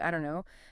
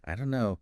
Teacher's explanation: the don't and know just merge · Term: linking